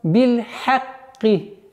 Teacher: Так как звук «кав» с огласовкой «касра», она читается мягче. И получается «биль-хакки», а не «биль-хакки», что является грубейшей ошибкой.